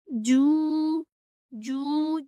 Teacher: जिस तरह के आप जीम को बार बार दोहराएंगे तो आपको पता चलेगा कि ज़ुबान का दरमियान वाला हिस्सा ऊपर के तालु के दरमियान वाले हिस्से के साथ लगेगा और साथ ही ऊपर के दांतों के साथ लगेगा तो हमारा जीम अच्छे से अदा हो पाएगा।